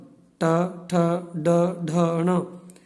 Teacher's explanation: टू का अर्थ है ट वर्ग, ट, ठ, ड, ढ, ण, और उसके बाद इसमें है र और श, र और श। इन सब वर्णों का उच्चारण स्थान होता है मूर्धा।